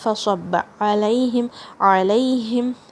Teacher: عین کی آواز حلق کے درمیان سے، اور یہاں پہ یا کا لین ساؤنڈ ہے